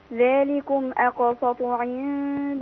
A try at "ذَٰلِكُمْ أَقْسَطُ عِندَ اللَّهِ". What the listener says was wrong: الله. لسه في شبهة صاد. أنا سامع أقسى، هي أقساسط.